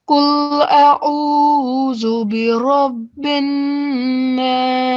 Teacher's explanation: So the ain is from your throat, and alif is not.